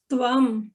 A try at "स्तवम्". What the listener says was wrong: त्वम नहीं, स्तवम। हाँ, स है ना उसमें, तो उसको उसका भी उच्चारण होगा स्तवम।